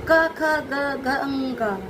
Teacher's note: तो क ख ग घ ङ, इन्हें हम कहते हैं कंठव्य ध्वनि व्यंजन, क्योंकि इसकी ध्वनि गले से निकलती है